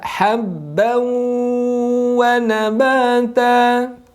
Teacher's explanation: Tanwin bertemu dengan wawu bertasydid, tahan 2 harokat. Jadi leburkan dulu kemudian tahan 2 harokat. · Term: gunnah